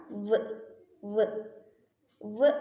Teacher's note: വ് വ് വ് പ്രൊനൗൺസ് ചെയ്യുന്ന സമയത്ത് ആക്റ്റീവ് ആർട്ടിക്കുലേറ്റർ ആയിട്ടുള്ള ലോവർ ലിപ്പ് പാസീവ് ആർട്ടിക്കുലേറ്റർ ആയിട്ടുള്ള അപ്പർ ഫ്രണ്ട് ടീത്തിലേക്ക് മൂവ് ചെയ്യുന്നു.